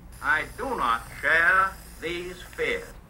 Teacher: the prestige pattern of the upper class in New York, and it was really R-less